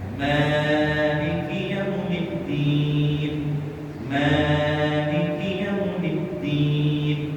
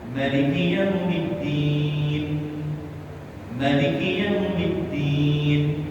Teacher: Kalau Maliki Yaumiddinnya dipanjangkan mimnya.